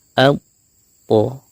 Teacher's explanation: ujung lidah di pangkal gigi seri atas disertai juga pangkal lidah yang kita naikkan karena dia huruf tebal. Contohnya seperti ini, al, kita sempurnakan dulu syiddahnya atau suara yang tertahannya, kita tahan dulu suaranya, kemudian setelahnya kita lepaskan makhrajnya, ujung lidahnya dari pangkal gigi seri atas tersebut. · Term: huruf to